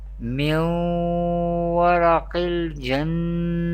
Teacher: This is the example of idgham because there is Yarmalun letter Waw comes after Noon Sakin. Here Noon is Sakin because it has Jazm sign. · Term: idgham with Gunna